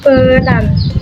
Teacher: pada penggunaan kata pe itu lidah kita berada di tengah-tengah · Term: bunyi Tengah